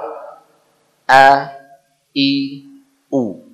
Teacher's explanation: Suara dia ada di pangkal tenggorokan. Makhrajnya di pangkal tenggorokan. Tenggorokan terjauh ya, bersama dengan huruf Hamzah.